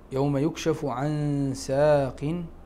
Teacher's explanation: فيها غنة، الحكم هو الإخفاء مع الغنة في مقدار حركتين.